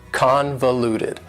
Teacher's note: convoluted also has four syllables and the stress is on the first syllable convoluted that second syllable again has that schwa sound that reduced